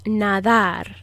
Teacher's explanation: out just like you would with a th sound in english it's just a very soft airy kind of d it's not a hard d like dog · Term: soft d